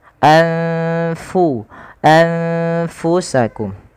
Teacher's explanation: suara nunnya disamarkan kepada huruf fa karena fa termasuk Salah satu dari huruf ikhfa yaitu huruf-huruf yang harus dibaca dengan menyamarkan suara nunnya ya kepada huruf setelahnya. · ditahan suara dengungannya sepanjang dua harakat